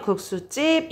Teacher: 시옷이 있음으로 해서 뒤에 된 소리로 발음을 쉽게 도와줍니다